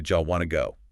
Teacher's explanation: The phrase do you want to becomes blended. do often reduces to jaw and want to becomes wanna. So do you want to go turns into jaw w to go. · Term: chunking